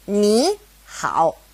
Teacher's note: when two third tones are side by side, the first one becomes a second tone · if it's a third tone and a third tone next to each other, ni, hao, it changes to a second tone and a third tone